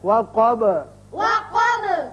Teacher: با ساکن ہو جائے گا، اب با بھی حروف قلقلہ میں سے ہے، اس کی صفت قلقلہ ادا کریں گے۔